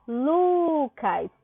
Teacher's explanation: o Lu é a sílaba mais forte do nome Lucas